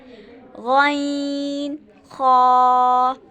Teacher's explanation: ये हलक के शुरू के हिस्से से अदा होते हैं यानी अदना हलक से।